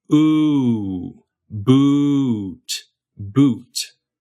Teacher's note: We say boot. It's actually two vowels stuck together. We start on u, and then we go up and back to oo.